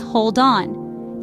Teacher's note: So, the in links with the a in apple, and voila, we have an apple. Similarly, the d in hold merges with the o in on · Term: Catenation